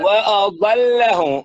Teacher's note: فخم الضاد ورقق اللام